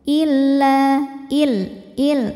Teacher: kalau ada lam tasydid jangan sampai ditahan bunyinya ya. Jadi ini cukup ditekan karena lam tidak punya dengung.